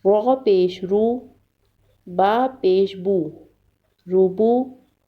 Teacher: را کو پر پڑھیں گے